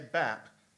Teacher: say Bap the a is going to be a little higher than if I say bab p and B are variations on the same thing Bap bab